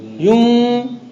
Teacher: ما قبل کا ضمہ ہے، آپ اس کو لمبا کر رہے ہیں اور اس میں غنہ ملا رہے ہیں، چونکہ زبان تو الگ ہو رہی ہے، زبان کہیں لگ ہی نہیں رہی ہے. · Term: تولید حرف مد